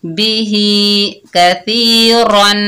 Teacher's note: रा के ऊपर 2 जबर की तनवीन है, तो यहाँ पर गुन्ना करेंगे वसल की हालत में